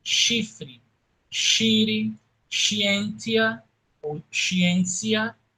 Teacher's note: O SC antes de E, I, Y, AE, OE, soa palatal